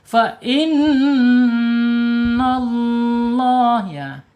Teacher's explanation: ada gunah ya nun tasyid. Lihat tahan dulu dua harakat ya. Ada yang berpendapat tiga harakat ya silakan ya.